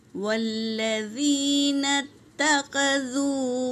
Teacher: واو حرکت ہے، لام پر تشدید ہے میری بہنوں، تو اسے 2 بار پڑھیں گے۔